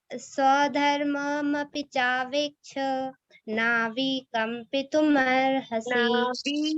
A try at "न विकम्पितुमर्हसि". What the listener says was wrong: विकम्पित नहीं है, न विकम्पित, वी तो बड़ी ही आ गई।